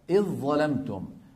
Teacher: ندغم الذال في الظاء بمعنى ما نقول إذ وإنما نقول إذ، إذ ننتقل من همزة مكسورة إلى مين؟ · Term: إدغام